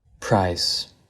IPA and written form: pɹaɪs (PRICE)